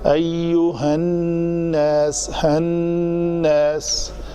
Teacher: غنہ یہ ہے کہ نون کی آواز کو ناک کے بانسے میں لے جا کر دو حرکات کے برابر اس کو جو ہے نا گنگنانا ہے